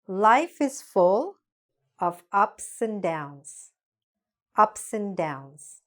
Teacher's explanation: And is usually pronounced just like n